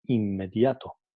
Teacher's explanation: N seguida de consonante bilabial M adopta un punto de articulación bilabial. Entonces, Es lo mismo cuando tenemos, vuelvo a repetir, cuando tenemos el sonido n seguido por un sonido bilabial, entonces el sonido n también pasa a ser bilabial. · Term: sonido N bilabial